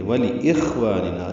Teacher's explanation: وَلِإِخْوَانِنَا میں یہاں پہ واو ہونٹوں کی نا تمام گلائی سے ادا ہوگی، لام کو جلدی پڑھیں گے. · یہ خوا ساکن ہے، اس پہ ہمس ہے، والف مدہ ہے.